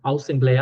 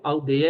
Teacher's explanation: Assembleia aberto, aldeia é fechado.